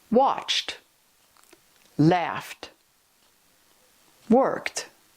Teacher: These verbs end in voiceless sounds like ch, f, or k.